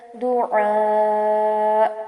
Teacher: عین کو واضح کریں گے اور پھر مد کرتے ہوئے آواز کو روک لیں گے، اور ہلکا سا اینڈ میں جھٹکا محسوس ہوگا کیونکہ حمزہ آ رہا ہے اینڈ میں